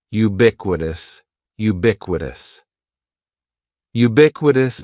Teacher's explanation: syllable is just like you're saying the letter U ubiquitous and the stress is going to be on that second syllable